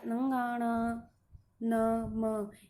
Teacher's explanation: इनका जब हम उच्चारण करते हैं तो हवा हमारे नाक से बाहर निकलती है। जैसे नंगाणा, न, म, ये सभी इनका उच्चारण करेंगे तो हवा नाक से बाहर निकलेगी। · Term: नासिक्य